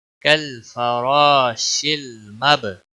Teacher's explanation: شین کو لام کے ساتھ ملایا جائے گا